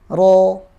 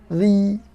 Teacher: Kalau ro dia anginnya keluar lewat tengah. Lihat. Jadi ro itu tidak menutupi langit-langit seperti ini. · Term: makhraj ro